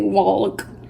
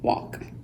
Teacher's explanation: the L is silent you pronounce the others